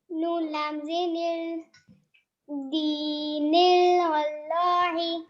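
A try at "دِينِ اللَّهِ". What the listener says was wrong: अब अल नहीं होगा, लाम खड़ा ज़बर ला, दीनिल्ला, जी दीनिल्लाही, ला को सीधा कीजिए, ला नहीं सीधा लाही, दीनिल्लाही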